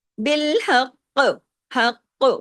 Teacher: بالحق، حق دونوں کاف پڑھنے میں آنے چاہیے. تشدید کی وجہ سے زیر کو روکنے کے بعد کلکلا بھی ہوگا. اور نمبر 3 اس کو ہیوی بھی کرنا ہے.